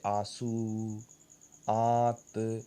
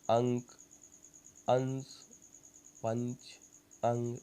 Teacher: अनुनासिक के उच्चारण में नाक से बहुत कम सांस निकलती है और मुंह से अधिक।